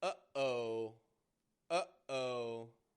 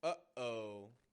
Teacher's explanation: We're using this valve in our throat, the glottis, to stop and start the sound.